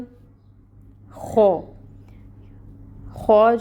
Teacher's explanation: خو جو ہے یہاں پر حروف مستعلیہ میں سے ہے، پر ہوگا، اور الف ساکن سے پہلے خو کے اوپر فتحہ کی حرکت ہے، تو الف مد کا رول ہو رہا ہے، یعنی اس خو کو ہم 2 کاؤنٹس کے برابر لمبا کھینچیں گے۔